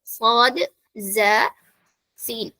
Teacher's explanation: നമ്മുടെ നാവിന്റെ അറ്റം താഴത്തെ പല്ലിന്റെ ആ ഉള്ളിലുള്ള ഭാഗത്താണ് ടച്ച് ചെയ്യുക, അവിടെയാണ് നമ്മുടെ നാവിന്റെ അറ്റം വെക്കേണ്ടത്. പക്ഷേ സൗണ്ട് പുറത്തേക്ക് പോകുന്നത് താഴത്തെ പല്ലിന്റെയും മുകളത്തെ പല്ലിന്റെയും, മുന്നിലുള്ള 2 പല്ലിന്റെയും ഇടയിലുള്ള ഗ്യാപ്പിലൂടെയാണ്.